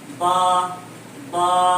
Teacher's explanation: با کا مخرج دونوں ہونٹوں کی تلی کا حصہ